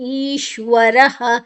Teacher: ರಾದ ನಂತರ ವಿಸರ್ಗದ ಉಚ್ಚಾರಣೆ ಹ